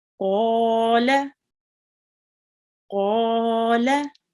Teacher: The qaf carries a vertical fatha and it will be pronounced for 2 seconds, prolonged for 2 seconds. And the lam is just the normal fatha.